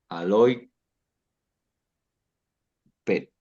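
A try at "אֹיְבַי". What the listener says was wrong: estás leyendo la yod como si fuera una i. Léelo como una yod con sheba. Oye y luego bai. Oye bai. Suena como si fuera un diptongo, ¿verdad? Pero en realidad es una pata con una yod.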